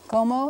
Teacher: accent on the first syllable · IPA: ˈkomo